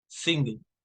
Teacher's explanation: You use the back of your tongue to make the ing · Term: ing sound